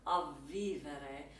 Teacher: you need to do a double V, which is that labial, dental, voiced fricative for you voice teachers out there.